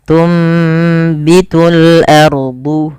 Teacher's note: Apa yang dibalikkan pada dasarnya tunbitu, karena ada huruf ba, maka suara nunnya dirubah dan diganti, dibalikkan menjadi suara huruf mim. Maka awalnya tunbitu dan ditandai di sini dengan mim kecil agar mim kecilnya mengganti posisi nun. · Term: iqlab